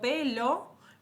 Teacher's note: fíjense que ya con la L estoy poniendo la boca con la O, porque obviamente es la forma en la que yo voy a hacer como una economía para poder hablar y decir tantos sonidos por segundo. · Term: coarticulación